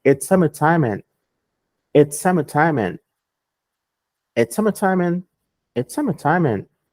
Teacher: Quando um gringo fala rápido, ele não pronuncia esse D. Então vai ficar, essa primeira parte vai ficar assim, ó. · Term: o D não é pronunciado